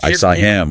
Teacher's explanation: dropping the h sound in function words like him or her